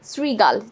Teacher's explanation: দেখো, শ্রীগালে এখানে একটা রিকার আছে, এই জন্য রফলায় রশি আমাদের উচ্চারণটা হবে, এবং শ্রীগালের তালব্য ষটা দন্ত ষ এর মতো উচ্চারণ হয়